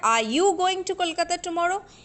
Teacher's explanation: Okay, and that's why I am putting stress on you. So here the stress is shifted from are to you. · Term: shifting stress